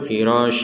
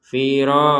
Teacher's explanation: sekedar masuk enggak ada dengung kan firos itu enggak ada dengung jadi posisi dengung itu di rongga hidung ya jadi rongga hidung kita berdengung